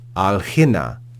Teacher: they just drop that final alpha and say alhina, which is easier to pronounce. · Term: euphony